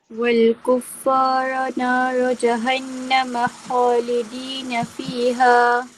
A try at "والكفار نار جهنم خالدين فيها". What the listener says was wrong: Sabdu والكفار نار جهنم 3 harakat dengung. Panjang sikit.